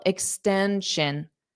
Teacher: The syllable stress is in the middle, extension.